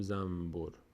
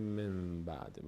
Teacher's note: نون و ب به خاطر اینکه مخرجشون به هم نزدیک‌تر بشه نون تلفظ نمیشه. میم تلفظ می‌کنیم که تا راحت‌تر تلفظ بشه. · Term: اقلاب